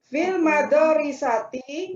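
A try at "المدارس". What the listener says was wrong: Bukan madorisati. Bukan madorisati, nggak ada madorisati. Madrasati. Iya, daknya itu daknya Daknya disukunkan Ibu bacanya ya. Fil madrasati gitu. Fil madrasati gitu.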